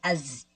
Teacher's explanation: یہ آواز ہلکی سی آنی چاہیے سیٹی کی